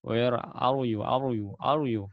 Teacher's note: bahasa Inggrisnya itu rnya gak ada sama sekali gak mengalir sama sekali